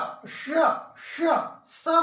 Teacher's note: श बोलोगे तो ये तालु को टच करता है, तालु को। फिर षटकोण बोलोगे तो ये मूर्धन्य को टच करता है, मूर्धन्य वर्ण है।